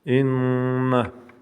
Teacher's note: Тут две нун удвоено. Поэтому первое нун говорится в нос, долгота произношения, два звука.